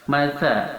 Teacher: Sifat pertama sa adalah hamas, yang berarti jika dia diucapkan ada hembusan nafas yang keluar